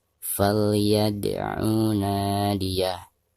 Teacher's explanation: Perhatikan ada dal sukun sekaligus posisinya ada di tengah-tengah bacaan, maka dihukumi qalqalah sugro dan dibacanya harus dipantulkan dengan suara pantulan yang tipis.